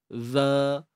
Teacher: Zal ni hujung lidah keluarkan sikit dari atas eh.